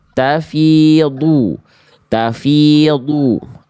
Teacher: Huruf dod itu termasuk ke dalam huruf yang tebal. Maka angkat pangkal lidahnya.